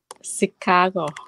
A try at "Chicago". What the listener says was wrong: Người Việt mình hay nói là Chicago nha. Nhưng tại vì họ thấy cái chữ CH. Cái kêu là Chicago.